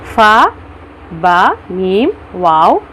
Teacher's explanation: यानी कि दोनों होठों को अशफ़तान कहते हैं। इनसे हरूफ 4 हरूफ अदा होते हैं, फ़ा, बा, मीम और वाव। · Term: हरूफ शफ़विया